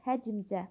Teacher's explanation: yazışda qapalı sait yoxdur, amma tələffüzdə i saytı əlavə olunur.